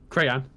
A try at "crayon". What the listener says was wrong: You're saying crayon. accentuating the Y like that, though. Like you're going crayon.